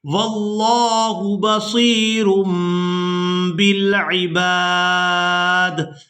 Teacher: جب بھی تنوین یا پھر نون ساکن کے بعد با آ جائے گی تو وہاں پر اقلاب کیا جاتا ہے، یعنی نون کی آواز کو میم کے ساتھ بدل کر ادا کیا جاتا ہے، تو یہاں تنوین میں نون کی آواز کو ادا نہیں کریں گے بلکہ میم کی آواز کو ادا کریں گے